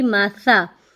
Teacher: سا کو آپ نرمی سے پڑھیں گے، کیسے پڑھیں گے، آپ نے دونوں دانتوں کے درمیان میں زبان کو کرنا ہے، اس کو دبانا نہیں ہے، تو آپ کا سا باریک نکلے گا